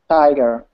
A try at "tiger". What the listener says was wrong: Not tiger, but tiger. Tiger. Make your tongue a little bit more sharp, like kind of lift it up. Lift it up. Make it higher and narrower. Tiger.